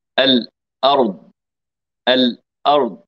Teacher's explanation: ان الهمزه لها مخرج من اقصى الحلقه والهاء لها مخرج اخر من اقصى الحلقه هو الهمزه والهاء من